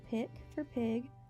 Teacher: the hard g is replaced by k